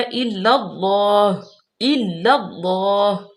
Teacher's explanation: اللہ کے لام کو موٹا پڑھیں گے